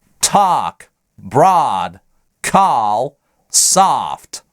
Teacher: Другая половина американцев, преимущественно на западе США, произносят в этих словах заднее А. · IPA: /ɑ/